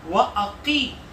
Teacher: وَأَقِي کی قاف کو ہم موٹا کر کے پڑھیں گے اور ساتھ میں کھینچ کے پڑھیں گے